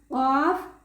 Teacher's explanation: قاف تھوڑا سا موٹا پڑا جاتا ہے زبان کی جڑ اور تالو کے نرم حصے سے